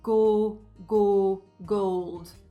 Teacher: Kind of sounded a little diphthongy again, a little bit of my American came back in